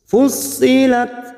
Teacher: tak sukun memiliki sifat hamas dan syiddah